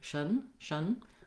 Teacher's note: the tion ending is just the sh sound, the sh sound with a little tiny schwa and a syllabic n, or almost no vowel there at all.